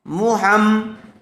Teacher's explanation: تو میم مشددہ 2 مرتبہ پڑھا جائے گا، ایک مرتبہ ہا سے مل کر اور ایک مرتبہ اپنی حرکت کے ساتھ۔ ہا میم زبر ہم، محم، میم زبر ما، محمہ۔